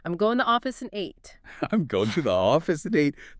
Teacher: Every other word in that sentence is just grammatical glue, so they get crushed down into tiny linked schwa sounds · That is the stress-timed rhythm operating at peak efficiency. The only words that get full, clear vowels and a spike in pitch are office and 8. Because those are the content words that carry the actual data.